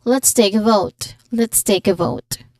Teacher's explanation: The T in let's, just like any other phrases that has let's, it should smoothly connect to the first sound of the next word. Here, it's the letter T sound in take.